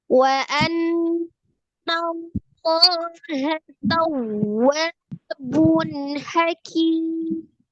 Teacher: alif lam jalalahnya dibaca dengan tebal karena sebelumnya adalah fathah di huruf nun